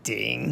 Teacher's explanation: I said ding, but it should be ding, third tone, in Chinese.